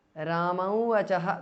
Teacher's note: The anuswara of ramam changes to the nasal of va.